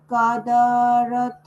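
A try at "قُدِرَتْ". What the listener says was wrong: কাদারত, হ্যাঁ, কাদা টান দেওয়ার দরকার নেই, আলিফ নাই যেহেতু।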